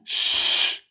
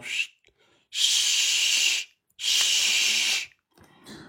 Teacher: La lettre Shin, le milieu de la langue toujours avec le milieu du palais. Vous voyez, c'est le même point de sortie.